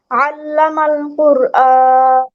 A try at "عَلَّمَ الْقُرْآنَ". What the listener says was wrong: আইনটা একটু সুন্দর করে, এখানে যেন আল্লামাল হামজার মতো না চলে আসে। আল্লামাল কুরআন, আল্লামাল।